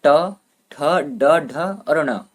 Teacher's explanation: ट ठ ड ढ ण इन पांचों में से कोई भी पूछ ले उनका उच्चारण स्थान है मुर्धा · ट वर्ग का उच्चारण स्थान है मुर्धा